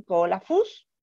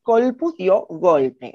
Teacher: perdió la A, que estaba posterior al acento, en la sílaba posterior al acento, se perdió y la C pasó a sonorizarse, se sonorizó en G, ¿sí?